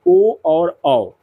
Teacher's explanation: उसके बाद आता है आपका कंठ और ओष्ठ यानी कि कंठोष् यानी कंठ और होठ दोनों को मिलाकर के जिन वर्णों का उच्चारण होगा वो होगा आपका ओ और औ